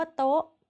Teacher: คำว่าโต๊ะมีรูปตรีเสียงตรี